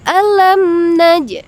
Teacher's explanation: Tapi selain mim dan ba ya, itu disebut dengan izhar syafawi. Jadi dibaca jelas, tidak didengungkan.